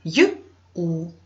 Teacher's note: чуємо звук й значить буква ю позначає два звуки